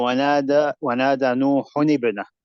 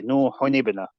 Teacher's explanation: you say the tanween, you say it with full idhar, and you merge into the next one. But what you do is basically you make tahriq of it at the end.